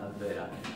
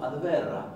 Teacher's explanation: Básicamente ahí dice advera Y no está mal pronunciar la advera, pero yo he escuchado en cursos con islandeses nativos diciendo adverra, con una leve R múltiple, como si hubiera dos